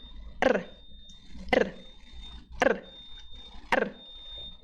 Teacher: fazendo isso muito rápido só que não precisa ser tantas vezes com três ou quatro vezes de vibração Você já consegue pronunciar o r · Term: R vibrante